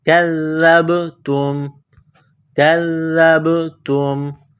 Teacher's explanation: کاف کو باریک کرنا ہے، کاف کو زال کے ساتھ ملانا ہے، زال کو دبانا ہے، زبان باہر نکالیں گے. زال کو پڑھتے وقت زال کو با کے ساتھ ملانا ہے، با ساکن ہے تو با پر قلقلہ کریں گے.